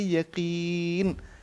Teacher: قاف موٹا حرف ہے لیکن اس کے اوپر جب زیر آ جائے تو پھر اس طرح کی تفخیم اس میں نہیں رہتی, پھر وہ کم موٹا ہوتا ہے, موٹا اپنی جگہ رہتا ہے.